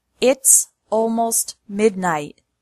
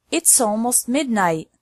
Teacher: apostrophe s to connect the first two words it's almost midnight can you hear how the S is connected to almost